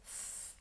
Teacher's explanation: my tongue comes right forwards between my teeth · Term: clear th